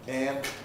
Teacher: man in American English is becoming closer, tenser